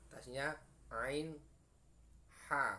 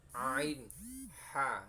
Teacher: Kemudian tenggorokan tengah adalah tempat yang keluarnya huruf ain dan h.